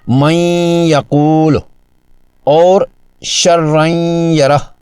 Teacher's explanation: نون کی آواز کو ناک کے بانسے میں چھپا کر یعنی غنہ کے ساتھ پڑھتے ہیں